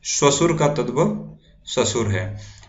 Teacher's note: तो आप देख रहे होंगे कि तालव्य सा दंती सा में बदल जाता है। तो आप ये याद रखें कि मोस्टली तत्सम शब्दों में तालव्य सा का यूज किया जाता है और वही तालव्य सा तद्भव शब्दों में दंती सा में बदल जाता है।